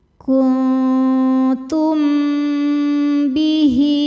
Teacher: Lalu ada hukum ikhfa syafawi sebab ada mim sukun menghadapi huruf ba. Cara bacanya mim sukun berdengung tahan.